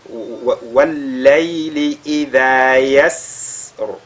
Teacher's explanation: Et comme c'est une lettre d'Al-Hams, n'est-ce pas, on essaye l'écoulement de l'air qu'il y aura fera qu'on va un tout petit peu allonger cette lettre Sin.